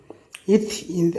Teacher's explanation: இத், இந்த் ஆகிய இரு மெய்களும் மேல்வாய் பல்லின் அடிநாக்கின் நுனி பொருந்துவதால் பிறக்கின்றன.